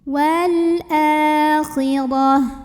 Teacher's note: ro-nya dibaca tebal tafkhim karena barisnya di atas, pangkal lidah diangkat. Wal akhirah, dan taknya kalau berhenti tak marbutoh jadi ha sukun, akhirah.